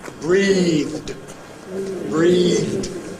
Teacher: The final sound is [ð], [briːð]. Is that voiced or voiceless? Voiced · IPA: [briːðd]